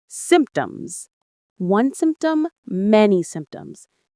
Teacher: It's a little tricky because of the P sound in the middle that we don't really pronounce strongly. The P is very soft, almost silent.